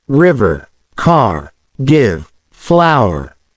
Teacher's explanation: The Irish accent tends to pronounce consonants, especially R sounds, more strongly. The R at the end of words like car is pronounced clearly, unlike in some British accents.